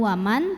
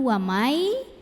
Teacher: nun sukun ini dimasukkan ke ya Jadi bukan waman tapi wamai disertai dengung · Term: Idgham Bighunnah